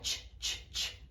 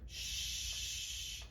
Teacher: Então, o CH tem um ataque e o SH é um som longo.